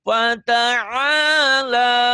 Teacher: Kalau mau tinggi fata'ala. Ujungnya tinggi gitu.